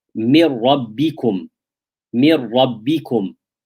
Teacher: The noon is merged into the ra. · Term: idgham without ghunnah